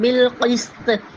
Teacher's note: لا الہ الا ہوا والملائکۃ وَأُولُو الْعِلْمِ، عین کو حلق سے نکالیں گے، وَأُولُو الْعِلْمِ قَائِمًا بِالْقِسْطِ، قاف کی آواز کو ہم حلق سے نکالیں گے